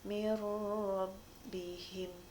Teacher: hurufnya ada dua yaitu lam sama road aurora dengan lam hai cara membacanya itu tanpa dengung jadi langsung dimasukkan kepada huruf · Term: idgham bilagunnah